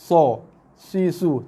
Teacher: Pangkal lidah dan juga tengah lidah meninggi. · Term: Isti'la dan itbaq